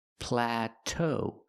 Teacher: The second vowel is a long o like no and go. pla plateau We stress both syllables.